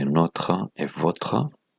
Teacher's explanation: Dans les cas de notre et votre, nous utilisons le O ouvert.